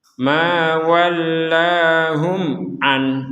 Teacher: kalau tidak bertemu misalkan kita berhenti di an maka Nun sukunnya terbaca dengan jelas